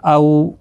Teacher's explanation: او واولین ہے، تھوڑا نرمی کے ساتھ کھینچ کر ادا کریں گے، آدھے الف کی مقدار کے برابر